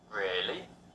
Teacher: a rising tone can indicate surprise